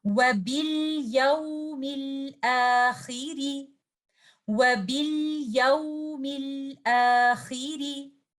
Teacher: Letter ra, it has a kasra, so you will recite letter ra without tafkhim with raqiq only.